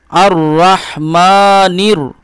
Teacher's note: আচ্ছা, এরপরে দেখুন, এখানে জবর দিয়ে আলিফ র জবর আর, র হা জবর রহ, মিম খাড়া জবর মা, নুন রজের, এই যে এই রয়ের উপর তাসদিদ রয়েছে, এই নুনের সঙ্গে রয়ের ইদগাম ঘটাবেন, মিলন ঘটাবেন। আলিফ লাম ধরবেন না।